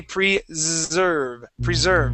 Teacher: the S in preserve is actually a voiced S